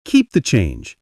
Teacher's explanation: Firm but kind tone with a small downward drop.